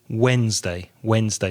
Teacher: the pronunciation Wednesday, Wednesday. So the D is silent.